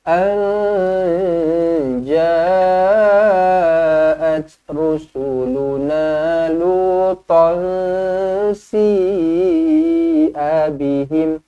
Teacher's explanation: nun kosong bertemu dengan jim ikhfa hakiki, dibaca dengan dengung 2 harokat